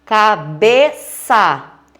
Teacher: Bé é a sílaba tônica e ela é a penúltima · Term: paroxítona